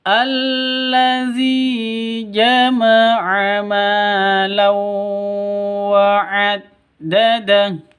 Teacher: Kalau al-qamariyah sukun, gitu ya tanda-tandanya. Allazi, zi panjang dua ketukan, ada ya mati diawali dengan kasroh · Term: Mad asli